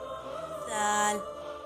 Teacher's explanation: जब ज़ुबान की नोक सामने वाले दो दांतों के किनारों से लगे तो अदा होगा जाल।